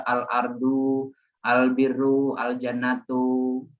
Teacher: huruf L dibaca dengan jelas sering disebut izhar qamariyah